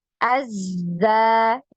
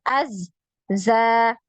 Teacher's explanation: aliran suaranya tadi ya ada aliran suaranya untuk huruf Za ini maka tidak putus suaranya ya ketika ditasdid